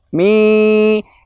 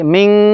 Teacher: menyamarkan huruf nun pada huruf setelahnya yaitu huruf syin dengan meletakkan maksudnya Nun disamarkan pada makhraj huruf selanjutnya dalam ayat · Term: Ikhfa